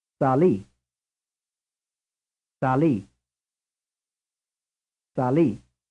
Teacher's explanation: Which syllable is stressed, the first or the second? Sali. The answer is the second.